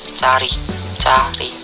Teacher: Vokal belakang, rendah, netral, terbuka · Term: Vokal A